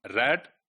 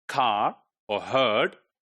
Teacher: central approximant is pronounced before a vowel